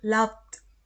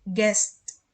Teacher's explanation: yang voiceless, ini nanti di ujungnya ketika kita menambahkan akhiran ed, maka dia akan berbunyi teh, kayak bunyi teh gitu ya